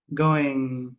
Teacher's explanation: The G is usually silent because we stress on the N a little bit or stretch the N.